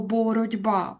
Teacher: відбувається вплив дзвінкого б на глухий т і відбувається явище одзвінчення. Тобто звук ти м'який перетворюється на свою пару дмякий.